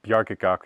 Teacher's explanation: The k's become g because it's between vowels